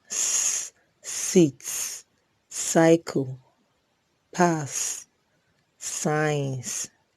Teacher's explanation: is a voiceless alveolar fricative